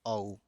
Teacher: ओ और औ का कहां से होता है? तो कंठ और ओष्ठ से होता है।